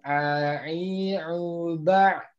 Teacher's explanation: Huruf ain itu dia bukan termasuk huruf yang sidah, jadi tidak mungkin terhenti.